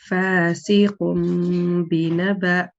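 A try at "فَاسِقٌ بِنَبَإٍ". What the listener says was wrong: Not bad, mashallah. Yes, alhamdulillah, good.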